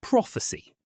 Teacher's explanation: Prophecy is stressed on the first syllable